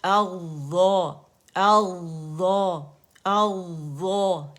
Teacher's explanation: موٹا کرنا ہے، میں اس کو مشدد کر کے آپ لوگوں کو بتا رہی، اغظا اغظا، تو دونوں ظا ہی موٹے ہوں گے